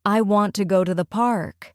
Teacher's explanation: a native speaker usually stresses want and park. It sounds like I want to go to the park. · in the sentence, I want to go to the park, a native speaker usually stresses want and park.